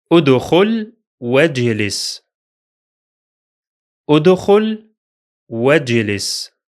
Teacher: The first Hamza is pronounced because it begins the speech, while the second is silent because it's in connected speech.